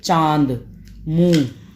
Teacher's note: अनुनासिक वो होते हैं जिसमें जब हम बोलते हैं तो जो वायु है वो वायु हमारे नाक और मुख दोनों से निकले